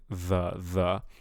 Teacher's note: I tell people to put the tongue between the teeth, and then you try to do that frication, like kind of like an S sound, but with your tongue between your teeth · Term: th sound